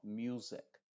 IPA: ˈmju:zɪk